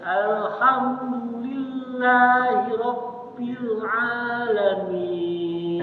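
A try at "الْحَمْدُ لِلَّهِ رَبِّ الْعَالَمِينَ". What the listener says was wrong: Aduh, mumtaz. Dah fase nih, Syekh.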